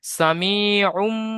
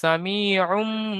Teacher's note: তানভিনের পরে বা এসেছে, তো তানভিনকে মিমের দ্বারা পরিবর্তন করে দিতে হবে। সামিউম। মিমকে ধরে নিতে হবে তানভিনের।